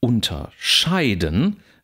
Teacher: da haben wir den Akzent sogar auf der dritten Silbe, weil das, was da präfigiert wurde, zweisilbig ist